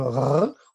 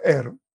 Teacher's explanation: des vibrantes et acoustiquement des grasseyés comme R ou des roulés comme R